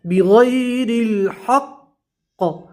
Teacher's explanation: قاف کے اوپر وقف کریں گے کیونکہ قاف میں قلقلہ بھی ہوگا اور قاف کے اوپر جزم بھی پڑھنا ہے، ٹھیک ہے.